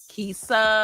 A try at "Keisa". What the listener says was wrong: Why do you always try to sing your name? Why you just can't say it right?